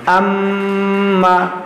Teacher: حمزہ میم زبر ام، میم زبر ما، اما، دیکھیے یہ میم ہے اور یہ میم مشدد ہے، اس لیے ہم اس میں گنہ کر رہے ہیں